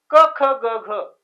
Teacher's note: क ख ग घ कंठाचा स्पर्श होतो